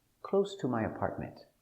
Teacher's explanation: now the intonation goes down at the end